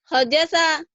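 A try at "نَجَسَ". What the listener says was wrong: Oh, ini bukan. Ini bukan. Ini titiknya ini Bu. Nah, ini ja ya. Najasa.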